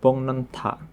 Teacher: Sangok atau pacim berbunyi K bertemu dengan N atau M, maka pacim berbunyi K tersebut akan berubah menjadi huruf ng ya sehingga dibaca menjadi bongnenta. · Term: nasalisasi